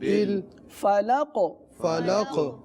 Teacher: سنا آپ نے کہ قاف پر قلقلہ کیا گیا نا، تو یہ بھی ایک عام غلطی ہے کہ قاف پر قلقلہ نہیں کیا جاتا۔